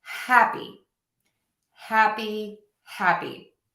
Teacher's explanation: I'm stressing the ha part of that word.